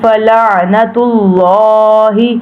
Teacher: کفروا بہ فلعنۃ اللہ، اب یہ پہلا جو ہے حرکات جو پیش آ گئی ہے تو اس لیے ہم نے پیش کو لام کے ساتھ اٹیچ کرنا ہے، موٹا پڑھنا ہے۔